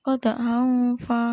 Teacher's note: ikhfa haqiqi karena ada tanwin bertemu dengan huruf fa